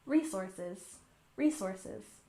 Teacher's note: And resources, we stress the first syllable, resources, resources.